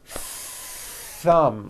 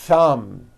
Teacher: Notice how long I'm holding the th sound.